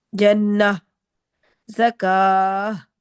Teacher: گول تا کو ہم ہا میں بدل دیں گے